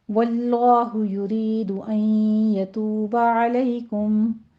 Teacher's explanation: واللہ لفظ جلالہ کو پر پڑھیں گے